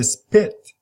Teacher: it aspirated pit but if you say spit you don't say you don't have the aspiration you don't have that puff of air